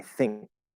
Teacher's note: when we say thing there's no g there at all there's no glottal stop g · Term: glottal stop K